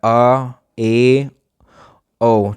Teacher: विवृत स्वर हैं, उच्चारण में मुख सबसे ज़्यादा इन्हीं में खुलता है